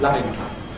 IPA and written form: ˈlavɪŋ kap (loving cup)